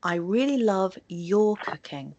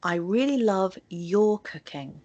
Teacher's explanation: I stressed your because I want to emphasize that I especially like your cooking rather than anybody else's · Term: sentence stress